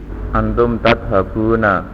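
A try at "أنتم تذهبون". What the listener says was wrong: Panjangan dikit ya Mas ya.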